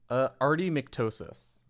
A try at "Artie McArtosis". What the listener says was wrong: Yeah, but there's an A there. Yeah, Artie McArtosis. But there's no second S, so it's just Artie McArtosi.